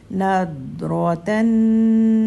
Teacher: نون کے لیے 2 حرکت کا ہولڈ